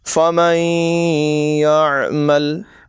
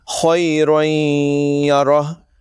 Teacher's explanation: درست ادائیگی یہ ہوگی فَمَن يَعْمَلْ، یعنی نون کو یا میں ملا کر غنہ کر کے پڑھیں گے، اور خَيْرًا يَرَهُ، یعنی تنوین کو یا میں ملا کر غنے کے ساتھ پڑھیں گے۔ یاد رکھیں دونوں جگہ ناک میں آواز لے جا کر ایک الف کے برابر غنہ کریں گے، یعنی تقریباً 1 سیکنڈ۔ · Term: ادغام